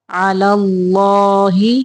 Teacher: آواز نکلے، وہ میم زبر نون یا، ومن یتوکل علی اللہ، اللہ کے لام کے پچھلے حرف کے اوپر زبر ہو تو اللہ کا لام موٹا پڑھتے ہیں